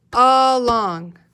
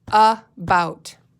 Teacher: the a at the beginning actually makes this short u sound doesn't it a long can you think of another word that